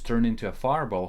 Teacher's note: Turned and into are linked, making it sound like turn into